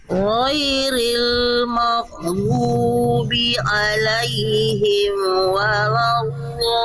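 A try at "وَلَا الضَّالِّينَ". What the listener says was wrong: Udah bagus Bunda, tinggal waladhdallin dia dialirkan suaranya. waladdo, dialirkan suaranya. Nah, waladdo. Gimana Bunda, huruf dot makrojnya di mana Bunda? Ke gigi geraham atas. Bo. Bo. Waladdo.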